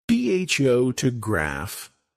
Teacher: stress on the first syllable.